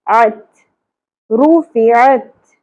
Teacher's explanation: عین وسط حلق سے ادا ہوگا باریک آواز میں